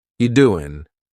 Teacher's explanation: You doing? We're dropping that G again.